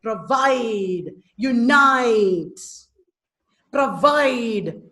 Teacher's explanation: pro is unstressed, vide is stressed. Unstressed followed by stressed. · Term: iamb